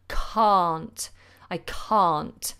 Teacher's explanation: it changes completely to a long are sound the jaw is dropped the mouth is open